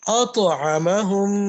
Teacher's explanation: قلقلہ ہے، اس کو ہلا کر پڑھیں گے اس کے مخرج میں